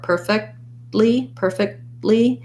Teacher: make a stopped t so i'm gonna it'll sound like per i'm not gonna really say that t i'm gonna just stop my k very short